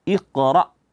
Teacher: Ro di sini tebal berjumpa dengan Hamzah yang yang mana itu dia bersifat syiddah yaitu tertahan suara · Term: ra di sini tebal